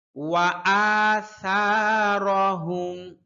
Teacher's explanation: সা খুব পাতলা হরফ, পাতলা করে উচ্চারণ করতে হবে। জিহ্বার আগা সামনের উপরের দুই দাঁতের আগার সাথে লাগবে।